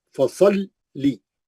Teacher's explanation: अगली आयत, फसल्ली, फसल्ली, स्वाद मोटा है, मुस्तालिया का है, मोटा पढ़ेंगे, फसल्ली, लाम 2 बार पढ़ेंगे, तजदीद है, सख्ती से पढ़ेंगे, फसल्ली 2 बार, फसल्ली, एक बार जज़म से, एक बार जेर से, है ना।